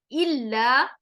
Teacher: لام کے اوپر شد ہے، تشدید، تو لام کو تھوڑا سا سختی کے ساتھ دو ٹائم اس کی آواز کو ہم پروناؤنس کریں گے. الا، آواز میں سختی ہوگی.